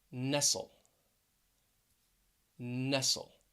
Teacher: all of them have two syllables and the stress is on the first syllable